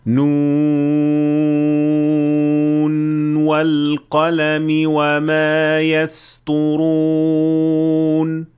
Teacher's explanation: مثال کے طور پر اگر آپ حفص عن عاصم کے طریق شاطبیہ سے پڑھ رہے ہیں تو آپ ادغام نہیں کریں گے اور نون کو ظاہر کریں گے